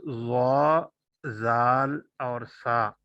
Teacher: 12वां मखरज है जुबान की नोक और सनाया उलिया का किनारा, सामने वाले दो दांत ऊपर वाले, उनको सनाया उलिया कहते हैं।